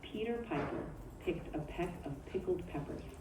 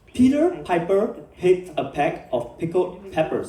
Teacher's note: Try to make them crisp and clear by pushing your lips together firmly and releasing with a little burst of air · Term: P sounds